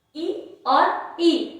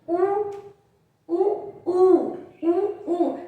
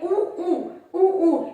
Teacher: उ उ उ उ यानी अपने होठों का प्रयोग ज्यादा हो रहा है ना, तो ये हो जाता है ओष्ठ, ये हो गया ओष्ठ।